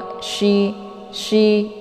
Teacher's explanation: makna tafasyi itu menyebarkan angin keluar dari mulut jadi harus e naasnya harus dikeluarkan semua ya Lai qo SY